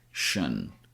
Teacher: I and o turn into a schwa sound.